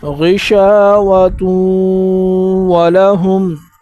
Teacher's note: غین کو پر پڑھنا ہے، شین کے بعد الف آیا ہے تو شین کو ایک الف کی مقدار اوپر کھینچنا ہے